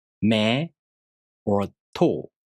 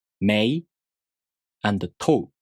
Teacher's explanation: You may think these words are pronounced with the long vowels like me or to, but no, these are pronounced mei and to. You enunciate the vowels in these words. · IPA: [mei] and [toɯ]